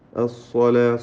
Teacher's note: സ്വാദിന് തഫ്ഖീം, മറ്റക്ഷരങ്ങൾക്കൊക്കെ തർഖീഖ്